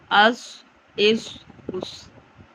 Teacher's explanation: سواد میں سیٹی بھی لیکن اس کو پر موٹا پڑھیں گے